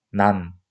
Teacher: 난의 받침 니은을 발음하면 난. 혀끝이 윗 잇몸 뒤에 붙는 것을 알 수가 있습니다